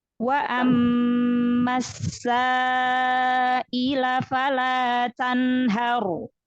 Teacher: Jadi ro sukunnya yang tafkhim ya, tebal, lalu kasih sifat inhirab bainiyah pada ro sukun.